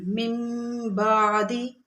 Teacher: تو وہاں پر اقلاب یعنی قاعدہ اقلاب یہاں پہ لگتا ہے، اس نون ساکن کو ہم میم سے بدل دیتے ہیں